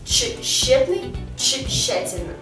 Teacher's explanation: сочетание тэще, если оно стоит в начале слова, то произносится как чэще